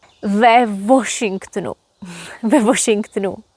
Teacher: in Czech w is pronounced just like v. And we don't say w, we say v.